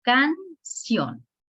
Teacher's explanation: La última sílaba se escucha más fuerte, lleva ción. Aquí en la sílaba ción es la que lleva el mayor relieve.